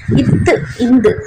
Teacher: மேல்வாய்ப்பல்லின் அடியை நாக்கு நுனி பொருந்தி வரும்.